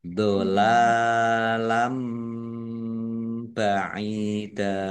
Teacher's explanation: Fathah tanwin bertemu dengan huruf ba, bacaan iklab, dibaca membalik. Fathah tanwinnya dibaca mim dulu.